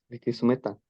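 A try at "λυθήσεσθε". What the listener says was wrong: Litisómeta. Recordé que tiene un acento allí, un acento grave. Litisómeta. Tal cual como en el español, en la vocal y en la sílaba donde esté el acento, allí se hace la fuercita.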